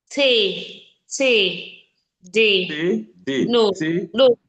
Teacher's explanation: what you have there is the tip of your tongue against your upper teeth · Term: dental sound